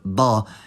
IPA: dˤ